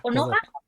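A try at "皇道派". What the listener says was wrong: Kodoha. No, Konoha Kodoha, con D.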